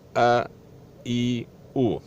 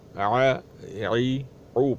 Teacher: حمزہ سختی سے ادا ہوتا ہے، نرمی سے ادا نہیں ہوتا، نرمی سے عین ادا ہوتا ہے۔ اس کو پڑھا جائے گا ا ای او، جبکہ عین کو ع عی او پڑھا جائے گا نرمی سے، اور حمزے کو سختی سے ادا پڑھا جائے گا ا ای او۔